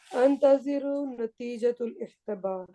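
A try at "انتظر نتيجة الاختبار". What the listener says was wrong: ہاں، پھر یہ خا کو تو ٹھیک کرے نا. خا اختبار، خا ایک نقطہ ہوتا ہے.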